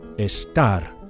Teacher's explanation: Make sure you emphasize the second syllable, the AR, the last syllable.